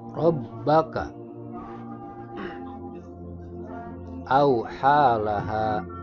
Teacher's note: Rabbaka, huruf ro-nya dibaca tafkhim karena berharokat fathah. Kemudian huruf ba di tasdid, maka membacanya harus ditekan.